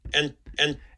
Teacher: this is an interdental right after um an alveolar nasal it's likely that n might be a little bit dentalized